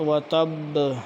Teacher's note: شد نہ ہوتی تو ہم پڑھتے و تب، شد ہونے کی وجہ سے ہم نے شد کو بھی ظاہر کرنا ہے قلقلہ کے ساتھ